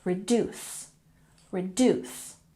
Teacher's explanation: by putting emphasis on the second syllable reduce reduce